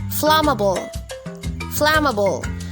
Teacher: into three syllables unai fla then ma then ball flammable flammable the stress is on the first syllable